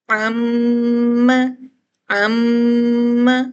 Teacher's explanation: ناک میں بھی ساؤنڈ آ رہا ہے اور ہونٹوں پر بھی آ رہا ہے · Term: غنہ شفوی